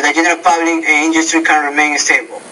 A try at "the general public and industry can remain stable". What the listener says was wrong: So overall, you understand that syllabic L and the syllabic R sound, so you are pronouncing those correctly. But Be careful about the thought groups. Remember, every thought group, the tone needs to be a little bit higher until you get to the final thought group, and that's when your tone drops a little bit.